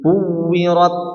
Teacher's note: huruf ta itu seakan-akan seperti berhenti dulu. Ya, karena memang dia sifatnya syiddah, artinya tertahan.